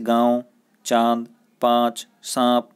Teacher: इसे अनुनासिक कहते हैं। इस ध्वनि के उच्चारण में हवा नाक और मुंह दोनों से निकलती है